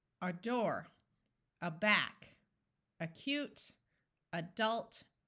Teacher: Split after the vowel, before the single consonant, and remember that the A at the beginning of the word is going to schwa